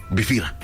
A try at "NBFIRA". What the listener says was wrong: pronounce the N. The N is not silent.